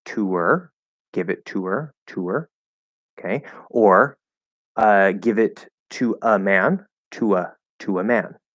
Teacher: Okay, normally to will reduce to ta, but if there's a vowel after it, it actually makes it a little more likely, not required, but a little more likely that we're not going to reduce to ta, because now we can use to and connect with the small w at the end of to into that vowel. So you can say to her, give it to her, okay, or give it to a man, to a man, okay, and that's actually a little easier to say and it flows.